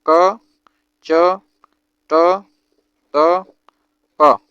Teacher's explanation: चा वर्ग ध्वनि तालव्य तालु से बोली जाती है